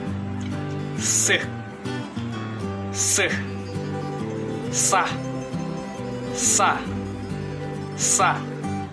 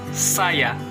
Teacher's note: Daerah artikulasinya terdapat pada titik pertemuan depan lidah dan batas di belakang gusi.